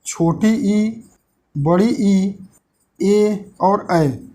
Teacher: ये कौन से हैं? अग्र भाग से बोले जाते हैं।